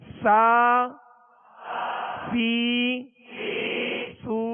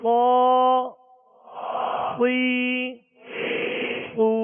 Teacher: سین کو باریک پڑھیں گے اور صاد کو پر یعنی موٹا پڑھیں گے، یہ اس کا فرق ہے، ورنہ یہ ایک ہی مخرج سے ادا ہوتے ہیں اور ان کی آواز بھی ایک ہی جیسی ہے۔